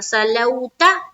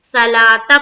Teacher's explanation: یہاں پر جو واو ہے نا اس کو حذف کر دینا ہے، اس کو بعد کر دینا، اس کو پڑھنا نہیں ہے، اس کا کوئی کام نہیں ہے.